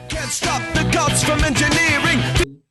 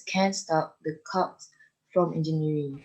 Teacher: they are exactly the same sound except for the fact that when we produce a G, our vocal folds vibrate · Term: voiced